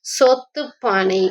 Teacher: கரி அப்படின்றது கரி ஆறு அரு ரகரம் ரெட்டிக்கும் போது தகர ஒளியாக மாறுகிறது